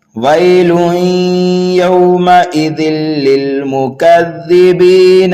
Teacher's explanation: وقف کر دیا آیت نمبر 10 پر تو یہاں پر نون کو ساکن کر دیں گے, یہاں پر بھی وقف بالاسکان ہو رہا ہے اور مد عارض کا قاعدہ بھی پایا جا رہا ہے. اور اگر ملا کر کے پڑھیں گے تو اس نون کو ہم لام مشدد میں ملا دیں گے